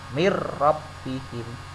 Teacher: non matinya masuk ke ra, tidak terlihat tetapi tanpa berdengung. Mir rabbihim, tidak mir rabbihim, tidak boleh dengan berdengung, langsung mir rabbihim, jelas gitu. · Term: idgham bila gunnah